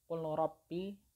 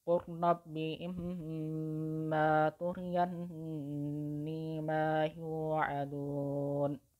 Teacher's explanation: Jadi huruf lamnya itu tidak terbaca. Lam yang berharokat sukun itu sudah tidak terbaca lagi karena sudah diidghamkan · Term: idgham mutaqaribain